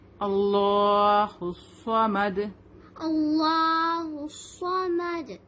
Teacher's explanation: وقف کی حالت میں ہم یہاں پہ رکیں گے تو دال پر یہ پیش ہٹ جائے گا اور یہاں پر ساکن بن جائے گا. اور جب دال پر ساکن ہوتا ہے تو ہم اس کو قلقلہ کے ساتھ پڑھتے ہیں